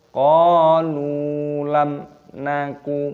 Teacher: Qalu lam naku, mim sukun bertemu dengan huruf nun, dibaca idhar syafawi, dibaca jelas, tidak boleh didengungkan. Kita baca qalu lam naku, tidak boleh, harus dibaca jelas.